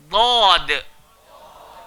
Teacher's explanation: Seluruh lidah, langgar gigi atas